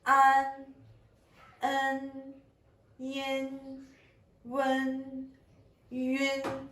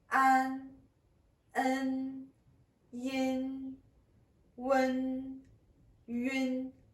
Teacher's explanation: Quand on prononce voyelle prénasale, la position de notre langue est assez basse et la forme de la langue est plutôt plate. Le devant de la langue touche les incisives inférieures.